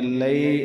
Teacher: یا لین ہے، اسے کو ایک الف مقدار سے بھی کم لمبا کریں گے